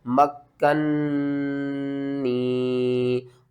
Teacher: نون مشدد ہے تو آپ نے غنہ بھی کرنا ہے